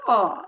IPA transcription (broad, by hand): ɒ